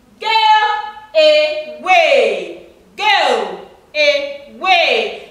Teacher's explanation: Girl is stressed. A is not stressed. Way is stressed.